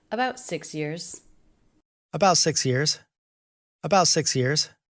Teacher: the next word begins with a consonant so we would generally make that ending tea a stop tea